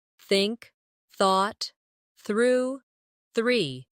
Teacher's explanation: put your tongue lightly between your teeth and push the air out for the soft th in think